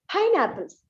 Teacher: Pine is given more stress apples is given less stress